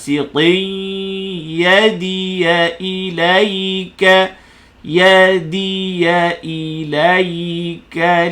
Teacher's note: Tanwin bertemu ya jadi idgham al ghunnah.